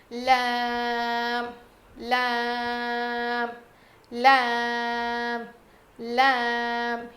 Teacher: لام لام لام لام، یہ بھی رو کی طرح ہی ہے. زبان کے کنارے کو اوپر کے داڑوں میں لگائیں گے